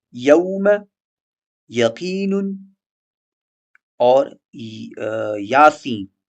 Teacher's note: ایئر فلو، ہوا کا بہاؤ، آواز فوراً اور بغیر رکاوٹ کے باہر نکلتی ہے، نہ شین کی طرح پھیلتی ہے اور نہ جیم کی طرح رکتی ہے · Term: یا غیر مدیہ